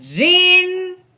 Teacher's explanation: اب رو کے نیچے کیا آ گئی ہے، تنوین، تو آگے حمزہ جو ہے وہ حروف ہلکی میں سے ہے، اب ہم نے تنوین پہ غنہ نہیں کرنا، بغیر غنے کے اظہار کے ساتھ پڑھنا ہے۔